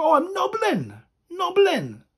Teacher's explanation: Pronounced with an upward inflection and missing off the G sound. As if to ask, well, am I noblin?